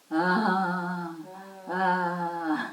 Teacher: And when you just breathe out, compare that with ah, ah. There is a vibration in your fingertips, I'm sure. And it is because inside the vocal cords are coming together.